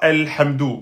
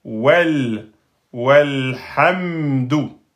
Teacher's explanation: Donc là, le waw a fait sauter le hamzatul wasl.